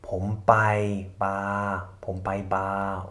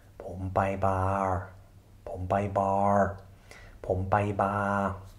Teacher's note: Bar auf Thai, so ausgesprochen, ohne R, R. Dann kommen eben Stummschaltungen auch sehr oft in Namen vor, in europäischen Namen oder englischen Namen.